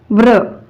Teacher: व्र चा उच्चार करत असतानी अगोदर व व्यंजनाचा उच्चार होतो नंतर र व्यंजनाचा उच्चार होतो आणि शेवटी अ स्वराचा उच्चार होतो